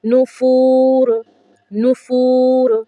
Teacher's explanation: تنوین ہے آگے وقف ہے، تو لیکن یہاں پر کیا ہوگا، ہم نے تنوین کو گرا دینا ہے